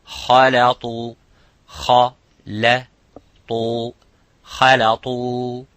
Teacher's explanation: kha is mufakham, and lam is muraqqaq, which is empty mouth. The ta is full mouth.